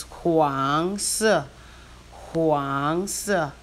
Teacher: Huang is the second tone. Si is the fourth tone.